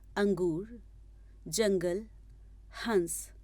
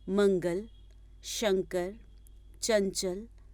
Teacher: जिन स्वरों के उच्चारण से ध्वनि केवल नाक से उत्पन्न होती है उन्हें अनुस्वार कहते हैं